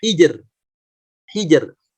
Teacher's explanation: Nah, di sini banyak yang mengecoh ya, akhirnya keliru membacanya, yang seharusnya tipis malah dibaca tebal karena mungkin sebelumnya hurufnya dibaca tebal. Khusus pada kata hijr itu malah jadi dibaca tipis karena sebelumnya sukun, sebelumnya lagi kasrah. Hijr. Hijr, bukan jadi tebal begitu.